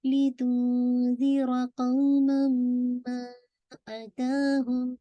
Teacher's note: कौमन के बजाय कौमम पढ़ रहे हैं , साउंड जो है वो मीम के अंदर कंप्लीटली